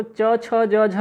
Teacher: चवर्ग, जिसको च छ ज झ यहाँ कहते हैं, इसका उच्चारण स्थान क्या होता है तालु